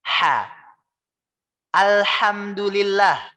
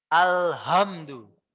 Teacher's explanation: Harusnya kita membacanya dengan huruf H yang tipis. H yang kecil.